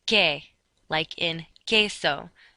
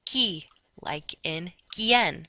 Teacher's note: QUE has no W sound. And just like GUI, QUI has no W sound.